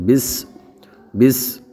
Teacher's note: یہاں سین ہے تو اس میں ہم صفیریہ کی آواز جو آتی ہے سین کے اندر وہ صاف طور پر نکالیں گے